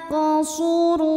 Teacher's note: cara bacanya adalah dipantulkan dengan pantulan yang kecil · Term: Qalqalah Sugra